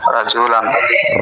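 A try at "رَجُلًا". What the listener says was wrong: রজুলান, রাজু না রজুলান,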